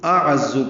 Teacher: عین وسط حلق سے ادا کرتے ہوئے زا سے ملائیں گے، زا تیز صفیر کی آواز سے ادا ہوگا